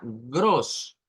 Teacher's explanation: Entonces, esto no suena a gros, porque si usted le hace gros, está haciendo una R del español, una R suave. Lo que debemos de hacer es gros, gros.